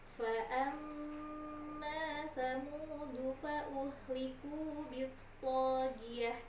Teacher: Kalau guna, tahan bacaannya 3 ketukan. Kemudian jangan lupa ada huruf to nya harus tebal ya nak ya. · Fa'amma mimnya bertasydid berarti itu guna. Kalau guna, tahan bacaannya 3 ketukan.